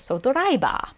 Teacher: They approximate the V sound with a B in this case.